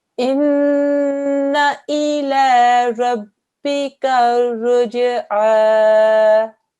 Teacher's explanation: Noon mushaddad, a 2-second gunna sound. We're going to spend 2 seconds on this and make a deep nasal sound. 2-second timing here.